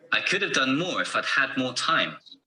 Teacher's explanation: The stressed words are done, more, had, more, and time. The weak forms are could and have. Had is also weak in the contraction I'd.